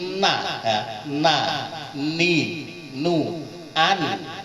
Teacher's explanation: nun itu hidup, mati atau ditasdid, itu punya sifat hunnah. Hunnah itu dengung.